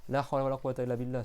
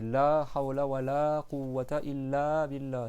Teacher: en prolongeant les la à chaque fois. C'est pas la hawla wa la quwwata illa billah, c'est la hawla wa la quwwata illa billah.